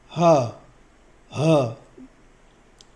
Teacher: حلق کے آخری حصے سے ہ